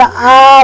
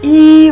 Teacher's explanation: आ भन्यो भने तल दबिन्छ, इ भन्यो भने माथि उठ्छ